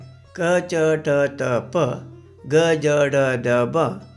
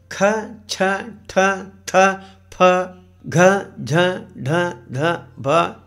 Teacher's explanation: ಪ್ರಾಣ ಎಂದರೆ ಉಸಿರು ಎಂದರ್ಥ. ಕಡಿಮೆ ಉಸಿರಿನ ಸಹಾಯದಿಂದ ಉಚ್ಚರಿಸಲ್ಪಡುವ ಅಕ್ಷರಗಳನ್ನು ಅಲ್ಪಪ್ರಾಣ ಅಂತ ಕರೀತಾರೆ.